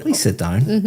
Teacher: my intonation is going up